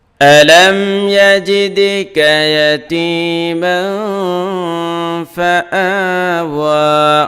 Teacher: দেখেন এই জায়গায় এই যে তানবিনের পরে ফা আসছে, ফা হলো ইখফা করে, এই জন্য ইয়াতিমাং গুন্না করতে হবে, ইখফা করতে হবে, নাকের ভিতরে নিয়ে লুকাইতে হবে